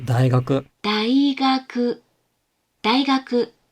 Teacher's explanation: in isolation, the word for 大学 or the university is 大学. It starts low, goes high, and stays high. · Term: flat